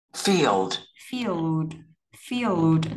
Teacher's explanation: Thì lưu ý là âm l ở đây cong lưỡi lên nào.